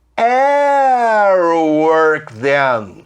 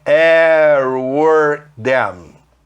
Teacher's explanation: Juntando o T com som meio R